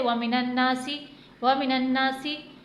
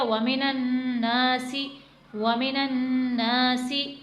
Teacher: ज़बर के बाद अगर अलिफ आ जाता है तो वो हुरूफ मद्दा बन जाता है और वहाँ पर एक हरकत के बराबर लाजमी खींचना है। जो अक्सर लोग जल्दी में पढ़ने के चक्कर में यहाँ पर खींचे बगैर आगे निकल जाते हैं।